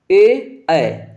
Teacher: तालू पे भी जाके होठ हल्का सा टच हो रहा है ए ऐ ठीक है तो कंठ पे भी है और थोड़ा सा तालू का भी इसमें संपर्क है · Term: कंठ तालव्य